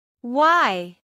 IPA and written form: waɪ (why)